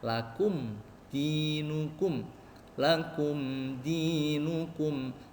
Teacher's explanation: mim sukun nya disempurnakan tetap jelas mengucapkan huruf Dal langsung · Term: Izhar Syafawi